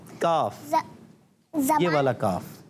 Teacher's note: जबान की जड़ और तालू के सख्त हिस्से से